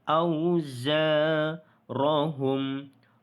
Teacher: Ya, ini huruf za yang ada titik tu kan. Ini adalah huruf zai. Maka di sini kita bunyikan getaran dia tu.